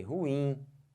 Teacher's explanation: a sílaba tônica não é o ru, é o in · Olha a força que eu botei, ruim. Força no in, não força no ru.